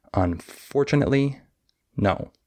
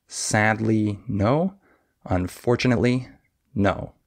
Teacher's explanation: you can hear how fast and how short those syllables are on the word unfortunately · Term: stress timed language